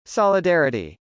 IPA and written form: s.ɑlədˈɛrəti (solidarity)